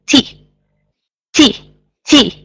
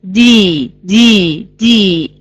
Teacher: the t is an unvoiced sound if you put your hand right here you will notice letter